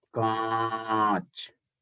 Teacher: the sound will come from mouth and नोज means air will come from mouth and नोज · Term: चंद्र बिंदु